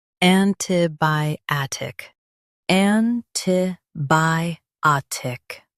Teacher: Stress bi and keep tic light.